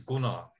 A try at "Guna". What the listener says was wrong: Yeah, but the Americans cannot pronounce a short U. So you're going to say Guna or whatever. It's Guna.